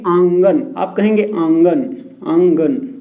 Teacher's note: जैसे कि आंगन, आप कहेंगे आंगन, आंगन, तो आप आंग आ बोल के देखिए आंग, तो इसमें आधा मुंह से निकलेगा, आधा नाक से निकलेगा वायु। इसी वजह से इसको क्या कहते हैं, अनुनासिक कहते हैं।